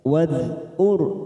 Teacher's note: hati-hati ada huruf dal sukun, jangan sampai dipantulkan karena ini bukan qolaqalah, maka kita tahan. Wadhkur, ada huruf ra sukun yang bertemu dengan huruf ra, namanya bacaan idgham mislain.